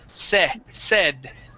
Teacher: First up, we have said. Instead of saying said and using a long A, it is a short E sound.